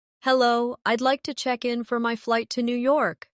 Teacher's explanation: Notice how check in sounds like one smooth unit. No pause in the middle.